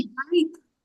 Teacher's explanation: تو بیت نرمی سے ایک الف کے برابر لمبا کرنا ہے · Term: یالین